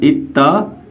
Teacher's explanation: दाल को हम ता करेंगे और ता में इदगाम कर देंगे तो हो जाएगा इत्तक़त्ता। क़त्ता पढ़ेंगे, क़दता नहीं पढ़ेंगे, अब क़त्ता पढ़ेंगे, इत्तक़त्ता।